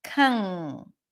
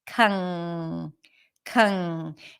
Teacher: and it's one sound it's not n and g n but it's one sound that is created by bringing the back of the tongue up